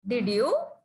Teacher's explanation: To express doubt, you can use rising tone.